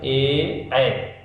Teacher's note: जब ए ऐ हम बोलते हैं तो कंठ और ताल दोनों का उपयोग करते हैं, इसीलिए इन्हें कंठ तालव्य ध्वनियाँ कहते हैं।